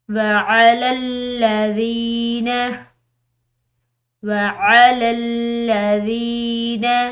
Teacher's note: ذال یہ نرم حروف میں سے، اس کے بعد یا ساکن ہے، تو اس کو ہم ایک الف کی مقدار لمبا پڑھیں گے